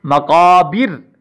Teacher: اور حالت وقف میں اس را کو ہم باریک پڑھیں گے